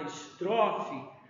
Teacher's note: na palavra estrofe a sílaba tró que é a penúltima sílaba ela é a sílaba tônica Então essa sílaba essa palavra ela é paroxítona e nas palavras